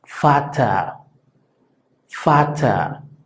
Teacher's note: La letra V, que se llama V en alemán, se pronuncia claro y fuerte, prácticamente como si fuera una F.